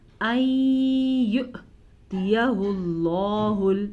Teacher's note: جب واو کے اوپر حمزہ آ جائے اور حمزہ کے اوپر ساکن ہو تو ہلکا سا جھٹکا پیدا ہوگا۔